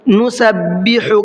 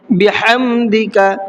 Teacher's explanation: حا کو تھوڑا سا حلق سے نکال کر کے پڑھنا ہے، نُسَبِّحُ کا حا بھی اسی طریقے سے پڑھنا ہے، بِحَمْدِكَ اس حا کو بھی اسی طریقے سے پڑھنا ہے۔